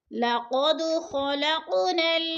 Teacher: لقد پہ قلقلہ ہو رہا ہے، دال پہ ہلا کر پڑھنا ہے